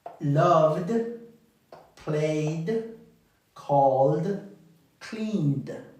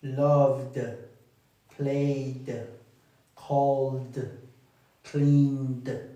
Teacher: Suena con la D de la terminación, exactamente. Suena con la D nada más, no suena la E.